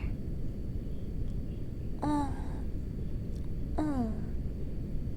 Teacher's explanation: This is our first nasal vowel. It's like the French in bon.